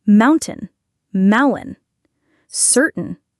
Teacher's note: Your tongue doesn't touch the roof of your mouth for the T. Your throat just closes briefly, stopping the air, and then releases it into the N sound.